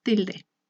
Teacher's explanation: La penúltima sílaba, que sería til, es la que lleva el acento. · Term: acento prosódico